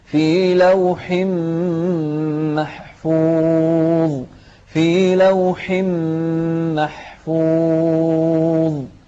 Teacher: ما نقلقل الضاء ونرقق الحاء في هذه الكلمة